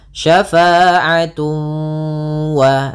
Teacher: Kemudian pada lafal tun ketemu waw lagi sama sebagaimana syai'an, yaitu ada idgham bi gunnah. Cara membacanya ditahan suara wawnya. Syafa'atun wa sambil dimasukkan ke rongga hidung.